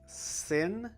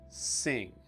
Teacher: the I sound is just a little bit different because of the sounds that come after it, whether it's just the normal N sound or it's the deeper NG sound